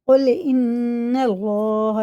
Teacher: اللہ کا لام زبر کے ساتھ ہے تو پر پڑھیں گے موٹا کر کے، منہ بھر کے